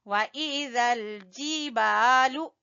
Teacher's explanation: با کو الف مدہ کی وجہ سے کھینچیں گے